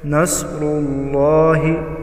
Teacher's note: नस्रुल्लाहि साद हुरूफ मुस्तालिया है, मोटा करके पढ़ेंगे।